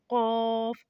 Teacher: जुबान की जड़ और तालू के नरम हिस्से से लगे तो कफ अदा होता है